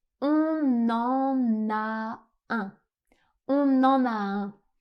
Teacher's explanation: on fait une autre liaison entre le N et le A.